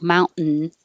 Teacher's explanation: you put your tongue in the t position and then you hold it there and make the n